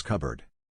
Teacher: is the removal of a sound from a syllable for example you have the words cup and board but together they are pronounced as cupboard the p disappears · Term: elision